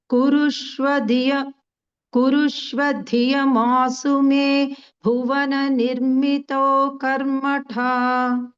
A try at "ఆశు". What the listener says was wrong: ఆ తాళవ్య షకారం ఉన్నప్పుడు ఆ సు అంటే దంత్యం వచ్చేసింది. ఆ సు అంటే తాళవ్యం వచ్చినట్టు. ఆశు ఆశు మే